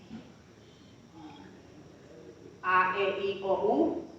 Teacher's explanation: A, E, I, O, U. están vibrando las cuerdas vocales